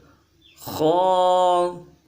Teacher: یہ خا بھی حروف حلقی میں سے ہے، لیکن اس کو حلق کے اوپر والے حصے سے پڑھیں گے، بالکل اندر گہرائی سے نہیں پڑھیں گے، لیکن پڑھیں گے اس کو موٹا کر کے پڑھیں گے۔